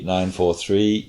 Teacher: 9 4 3 with a rising pitch on that third one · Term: pitch accent